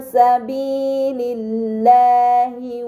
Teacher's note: Pada kata sabilillahi terdapat lam pada lafaz Allah sebelumnya harokat kasrah, maka lam tersebut dibaca secara tipis